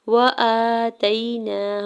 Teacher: حمزہ کے اوپر کھڑی زبر دو حرکت کھینچ کے ادا کریں گے